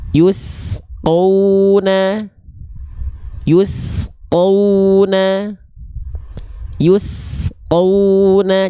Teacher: sin sukunnya nggak boleh terputus, nggak boleh memantul.